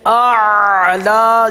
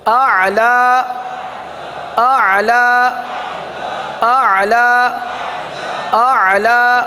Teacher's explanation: حلق میں لے جائیں عین کو، وسط حلق سے ادا ہوتا ہے